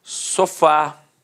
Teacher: Repare que a sílaba tônica é a última e é terminada de fato em A.